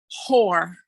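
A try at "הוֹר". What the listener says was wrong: And I understand the language difference, but there's no H sound here.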